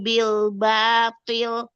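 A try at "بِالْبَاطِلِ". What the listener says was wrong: Matnya suaranya jangan mencar kemana-mana. Luruskan lagi al-jaufnya. Ya matnya jangan mencar-mencar. Jangan bubar-bubar suaranya kemana-mana.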